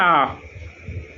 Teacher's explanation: এই আ উচ্চারণের সময় মুখের ভেতরের শূন্যস্থান আরও বেড়ে যাচ্ছে এবং সর্বাধিক বেশি হচ্ছে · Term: বিবৃত